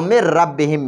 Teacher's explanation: کې د دې نون ساکن نه به هم را جوړه کړي نو هغه را او دا را دواړه به یو بل کې مدغم شي غنه به پکې نه کېږي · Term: ادغام بغیر غنه والا